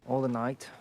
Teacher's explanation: he puts like a weird vowel after all